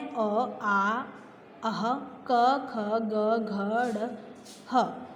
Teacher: इनको बोलने के लिए कंठ की सहायता से ये बोले जाते हैं, इसलिए ये कांठे हैं।